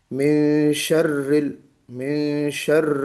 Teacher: تو بسم اللہ الرحمن الرحیم، اعوذ باللہ من الشیطان الرجیم، بسم اللہ الرحمن الرحیم، من شر ہے نا؟ اس میں تکریر بھی ہو اور را کے اوپر تھوڑی سی تشدید بھی واضح ہونی چاہیے